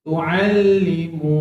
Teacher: Tu'allimu. Dua harakat sebab ada waw kosong. · Kenapa tahan kat lam tu? Lam ada sabdu, tekan. Tekan. Tu'allimu.